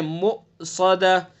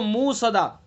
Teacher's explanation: میم کے بعد حمزہ ہے تو جھٹکا لگائیں گے، حمزہ کو تحقیق سے پڑھیں گے، مؤصدہ۔ بہت سے پڑھ دیتے ہیں اس کو موصدہ، حمزہ کو ختم کر دیتے ہیں، تو دھیان سے پڑھنا ہے۔